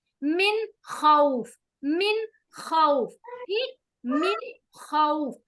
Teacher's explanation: नून को हम जाहिर कर रहे हैं, इसकी आवाज को शो कर रहे हैं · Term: इजहार